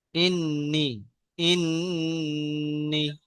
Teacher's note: নুনের উপরে তাসদিদ এসেছে, এটা গুণনা করে পড়তে হয়। নুন তাসদিদকে একালিপ পরিমাণ গুণনা করে পড়তে হয়।